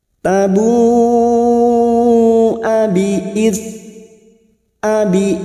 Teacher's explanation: Hamza sifatnya sidah tertahannya suara ketika mengucapkan huruf tersebut